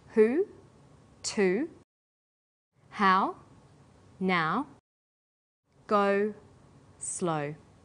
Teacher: High back vowels are oo, ow, and o. Sounds that are produced with the highest part of the tongue, but close to the back of the mouth.